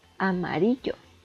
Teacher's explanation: Esta está dividida en 4 sílabas y vemos que la sílaba tónica recae en ri